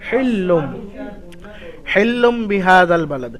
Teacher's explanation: তো এখানে দেখতে পাচ্ছেন হিল্লুমে তানবিনের পরে বা এসেছে, তো এখানে ছোট একটা মিম দিয়ে রেখেছে, এই মিমের দ্বারা পরিবর্তন করে পড়তে হবে এই তানবিনটাকে, অর্থাৎ লামের উপর যে তানবিন এসছে এই লামটাকে হিল্লুনের জায়গায় ওটা হিল্লুম পড়তে হবে। وأنت حل بهذا البلد, হিল্লুম এক আলিফ গুন্না হবে মিমের দ্বারা পরিবর্তন করে, এটা ইখলাবের কায়দা।